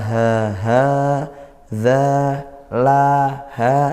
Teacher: ini hukumnya Mad Thobi'i dibaca panjang satu Alif atau dua harakat karena dia fathah diikuti Alif nah hari sedangkan Ri ini ro